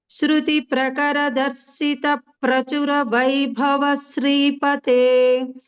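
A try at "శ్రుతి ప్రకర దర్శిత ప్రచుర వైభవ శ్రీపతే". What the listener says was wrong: ప్రకరాలో పకారం సరిగ్గా రాలేదు. ప్రకరాలో పకారం ఎక్కువ పకారాలు ఉన్నట్లు చెప్పాలి.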